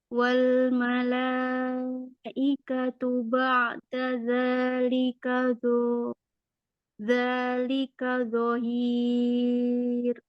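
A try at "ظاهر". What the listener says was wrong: Wal malaikatu ba'da dzalika dhahir. Dho-nya dho. Coba dhahir. Iya, rohnya tarkik ya di situ ya.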